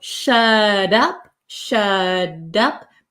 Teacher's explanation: my tongue goes up like a D sound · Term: soft D sound